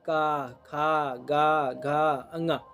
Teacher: का वर्ग जो है कंठ से उच्चारित होता है